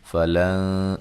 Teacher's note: نون ساکن کا باریک اخفا ہے